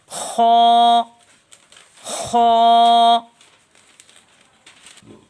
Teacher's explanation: خو خو خو جو ہے یہ حلق کے ادنا حصہ سے ادا ہوتا ہے اور خو کی آواز موٹی ہے۔ خو کو ادا کرتے وقت گلے میں خراش سی ہوتی ہے،